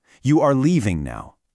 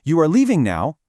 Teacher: If I say it with a falling tone, you are leaving now. It's a statement. I'm just telling you something. · But if I use a rising tone, you are leaving now. Suddenly it's a question. See, same words, different music, totally different meaning.